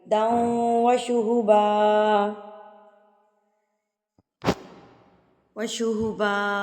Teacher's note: شدید دن نہیں پڑھنا ہے، شدید داؤں غنہ کے ساتھ پڑھیں گے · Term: ادغام